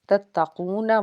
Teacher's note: واو ساکن سے پیچھے پیش ہے، 1 الف کے برابر کھینچ کے پڑھیں گے